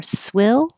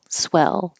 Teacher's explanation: and the vowel is e as in head so swill is the I the tongue is a little bit higher swill and then swell as in yes e the tongue is more flat and the Jaws a little lower